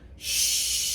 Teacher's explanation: It's not s, it's sh. Remember, our lips are round